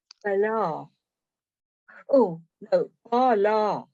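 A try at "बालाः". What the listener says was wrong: But with a strongly Balaha. Yes, Balaha. Yeah, with a strongly pronounced H with a shadow after it. Balaha.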